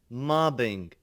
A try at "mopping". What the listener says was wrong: It's mopping, mopping. So you're not pronouncing that P there. Mopping, mopping. Okay, so the P is the consonant sound that you've been consistently having problems with.